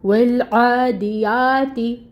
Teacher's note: تا مرقق ہے، باریک ہے، کسرہ کی حرکت ہے 1 کاؤنٹ۔